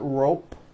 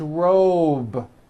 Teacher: robe also has a voiced B ending it's not rope with an unvoiced P